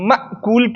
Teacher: اوس مأکول کې حمزه ده، د دې آواز خو نه روانېږي. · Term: شدت